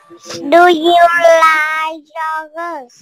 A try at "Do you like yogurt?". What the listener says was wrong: Lên giọng cuối câu con ơi. Do you like yogurt?